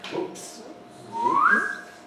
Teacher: an interesting thing about whoops or oops in English is that it must have a rise